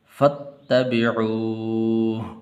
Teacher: فا کو آگے تا کے ساتھ ملانا ہے